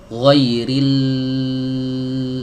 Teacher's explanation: huruf lam itu jangan dipantulkan tapi dialirkan alirannya sedikit saja ia alirannya ndak terlalu banyak sedikit saja ini yang disebut dengan